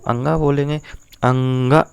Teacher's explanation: का वर्ग का जो पंचमाक्षर है यानी जो अंगा है ये आपका कंठ से तो बोला जाएगा, प्लस आपका नासिका से भी बोला जाएगा, क्योंकि जब आप अंगा बोलेंगे अंगा तो आपका कंठ भी उतना ही काम करेगा और उतनी ही आपका नासिका भी काम करेगी